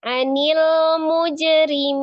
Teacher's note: Jim sukun dibaca kolkolah atau dipantulkan karena dia diwasal atau di posisi di tengah. Kolkolahnya sughra.